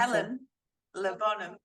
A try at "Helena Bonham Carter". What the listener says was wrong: Helena. Helena. One word. Bonham. Carter.